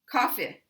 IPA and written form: coffɪ (coffee)